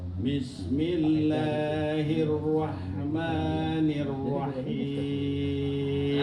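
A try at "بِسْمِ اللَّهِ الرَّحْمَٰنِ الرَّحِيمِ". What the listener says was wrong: Nah, rahim. Nah, itu terlalu cepat perpindahannya. Bismillahirrahmanirrahim. Rahi. Jadi bukan rahim. Tapi rahim. Fokus ke ra, baru pindah ke hi.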